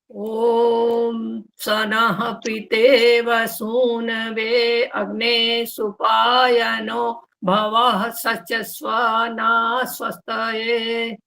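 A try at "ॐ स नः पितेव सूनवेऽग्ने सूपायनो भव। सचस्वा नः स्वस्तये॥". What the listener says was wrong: सबसे पहले तो जी इन्होंने बोला है ये स नहा पितेवे ना, तो सहा पहले तो बोला है, और अग्ने बोला है, अग्ने नहीं होना चाहिए, सुनवेग्ने।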